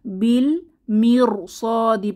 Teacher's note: যেমন এখানে প্রথমেই দেখতে পাচ্ছি বিল মির, সদি পড়তে হবে। এখানে বিল মির রকে পাতলা করে পড়বো না, যেহেতু পরবর্তী হরফটা সদ মোটা হরফ এসেছে